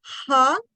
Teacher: When I say ha, I'm producing it at the level of the throat.